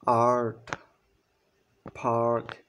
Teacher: এই শব্দগুলো উচ্চারণ করার সময় কিন্তু শব্দটা ব্যাক থেকে আসতেছে বা জিহ্বাটা পিছনের দিকে অগ্রসর হচ্ছে পশ্চার্য দিকে অক্রসরণ হচ্ছে এবং এগুলো কিন্তু জিহ্বাটা তখন নিচুতে অবস্থান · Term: ব্যাক ভাওয়েলস